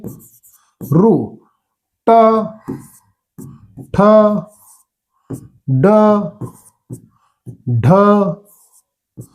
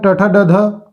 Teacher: जीभ आपली ब्लेंड होऊन मागे जाते मागे फिरते वळते मागे तर ऋ म्हटलं तर मागे फिरते टाळूच्या वर फिरते अशा वेळेस त्याला मूर्धन्य म्हणतो